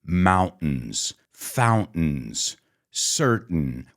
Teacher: in the United States we say mountains fountains certain we have that glottal stop